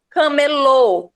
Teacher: camelô ou seja o som se desloca para última sílaba